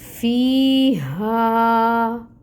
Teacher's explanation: فی یا مد کا رول ہو رہا ہے، یا ساکن سے پہلے کسرہ یعنی زیر کی حرکت ہے، یا مد ہو رہی ہے تو اس کو ہم 2 حرکت لمبا کھینچیں گے، 2 کاؤنٹس مقدار ہوگی۔